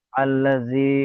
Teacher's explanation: ইয়ামাদ্দা বলে। ইয়ামাদ্দা এক আলিফ পরিমাণ টান দিয়ে পড়তে হয়।